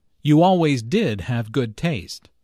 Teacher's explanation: notice the stress on did to emphasize the fact that julia does have good taste